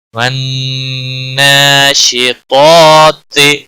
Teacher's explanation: پہلا طا جو ہے موٹا ہے، اس کے اوپر مد اصلی بھی ہے، 1 الف کے برابر کھینچنا بھی ہوگا. نون پر، نون مشدد پر گننا بھی ہوگا، اور اس کے اوپر مد اصلی بھی ہے، 1 الف کے برابر بھی کھینچنا بھی ہوگا